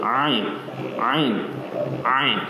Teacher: Ain kena ada sengau dekat hidung.